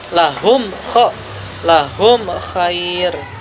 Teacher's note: Izhar jelas, tidak ada gunnah, tidak ada dengung, tidak ada pantulan. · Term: Izhar syafawi